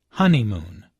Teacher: There are 3 syllables in honeymoon, with a stress on the first syllable, honeymoon.